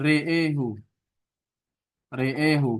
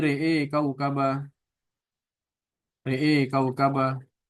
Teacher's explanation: Kalau dia dibaca kosal ya, re'ehu. Kita fokus di hamzah dan alifnya dibaca seluruhnya dengan imalah. Ro'a kaukaba menjadi re'e kaukaba.